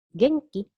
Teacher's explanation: you just raise the intonation to mean that as a question